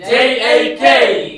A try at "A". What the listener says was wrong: এ হবে না এই হবে, এ বল না এই বল, এ বল না এই বল, এ হবে না এই হবে,